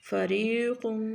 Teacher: اس را کو باریک پڑھیں گے یہ را مکسور ہے زیر والی ہے کسرے والی ہے اس را کو باریک پڑھا جائے گا فریق